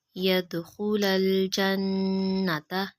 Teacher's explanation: نون مشدد پہ غنہ کریں گے